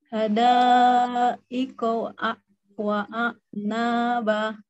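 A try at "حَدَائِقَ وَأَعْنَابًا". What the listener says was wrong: Belum terdengar perbedaannya ya. Wa'a. Jadi jadi selesaikan A-nya dulu, wa'a. Kemudian lanjut ke ain, wa'a. Nah, wa'a gitu, wa'a.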